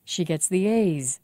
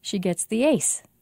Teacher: Z is voiced and S isn't. So we have to say A's for a longer time than we say ace.